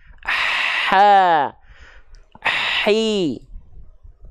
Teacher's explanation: H kecil juga kan dia mengalir nafas dan mengalir suara